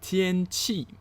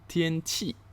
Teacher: first tone followed by fourth tone